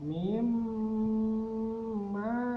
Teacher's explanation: Jadi setiap ada nun bertasydid atau mim bertasydid dinamakan gunnah musyaddadah. Jadi dengungnya dilamakan.